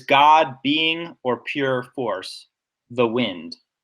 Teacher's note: So God is stressed. I think the first part of being is stressed, pure force, and the wind. I think those are all stressed. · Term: stressed syllables